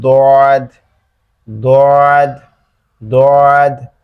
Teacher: এরপর হচ্ছে জিহ্বার পেছন থেকে, জিহ্বার পাশ থেকে, জিহ্বার পাশ থেকে, অর্থাৎ জিহ্বার ডান সাইড অথবা বাম সাইড, উভয় সাইডের যে কোনো এক সাইড থেকে ডান দিকের উপরের মাড়ির সাথে লাগবে, লেগে উচ্চারিত হবে দদ, দদ, দদ।